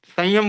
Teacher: बोलचाल की भाषा में तो नासिका वाला ही उच्चारण आ रहा है